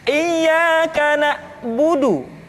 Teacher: ketika huruf ain disukun, maka suara kita tidak boleh mati